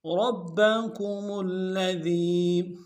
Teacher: را کو موٹا ادا کریں گے اور با کے ساتھ ملانا ہے، با کے اوپر تشدید زور دیں گے۔ میم کو آگے لام کے ساتھ ملانا ہے، لام کے اوپر تشدید زور دیں گے۔